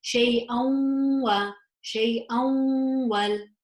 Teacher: Yes, it's yanmu. So I would pronounce this with idgham, with the gunna.